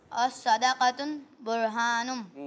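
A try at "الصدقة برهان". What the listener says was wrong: अस्सदक़तु को अस्सदक़तुन पढ़ा है।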